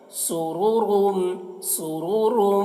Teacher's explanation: یہاں پر دونوں را کو پر پڑھ رہے ہیں۔